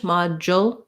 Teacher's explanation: this d u we do a j sound and then we have our dark l at the end with a little bit of a schwa